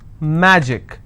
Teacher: Magic, I will stress on ma.